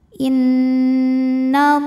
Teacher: Nun bertasdid cara bacanya dengung tahan dengungannya kurang lebih dua harakat innallah lam pada lafaz Allah atau lam jalalah dibunyikan secara tafkhim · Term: ghunah musyaddadah